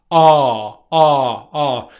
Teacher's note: my lips are fairly unrounded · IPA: /ɑː/